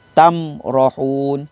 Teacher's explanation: Cara bacaan izhar syafawi dengan menjelaskan sebutan huruf mim sukun atau mim mati tanpa dengung.